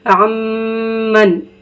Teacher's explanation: یہاں پہ غنہ کریں گے کیونکہ نون ساکن کے بعد میم آ رہا ہے